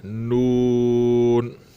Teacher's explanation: نون بھی بغیر غننے کے ادا کرنا ہے